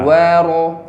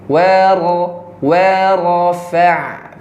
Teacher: Wa monyong, kemudian di ro tidak perlu monyong, jangan wa ro, tapi wa rafa'.